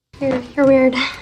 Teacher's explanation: Both your and weird are stressed in this sentence.